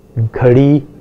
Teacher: between two vowels such as o and a, you never find a d, it becomes a ra. Ghadi is another example of flapping.